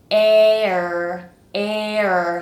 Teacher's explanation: So we start from an a, like in bed, and then come up into an air, like the word air.